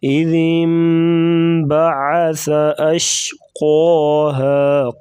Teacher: کے ساتھ ملائیں گے، یہاں پر اقلاب ہو رہا ہے، یعنی نون کو میم کے ساتھ بدل دیے جائیں گے، اس کو اقلاب کہتے ہیں، یہ بھی غنہ ہی ہوتا ہے